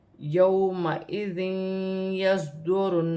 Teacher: صاد موٹا ہے، ساکن ہے، اور یا کے ساتھ ملا کر پڑھا جائے گا